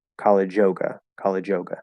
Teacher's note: We're probably just going to delete that Y and connect directly to the vowel.